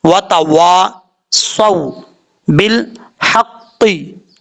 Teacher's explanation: واو کو پڑھتے وقت ہونٹ گول کریں گے۔ اگر ہونٹ گول کر کے واو کو نہیں پڑھیں گے تو سمجھ لیجیے گا اپنے مخرج سے ادا نہیں ہوگا۔